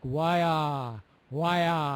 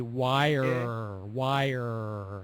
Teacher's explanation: with that that you pronounced wire much better the second time the first time you didn't hit the North American R sound very well it was more like why why and it needs to be wire wire